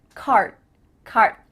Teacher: my tongue is flat against the roof of my mouth to make the D but it's not coming out